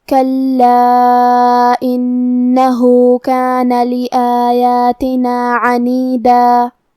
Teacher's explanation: کلمت کلا میں حرف اللام پہ تشدید ہے، لہذا 2 حرف کے برابر ہم حرف اللام کو پڑھیں گے کیونکہ تشدید کی اصلیت 2 حرف ہے.